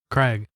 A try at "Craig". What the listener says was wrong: Craig. sounds like you're saying Greg.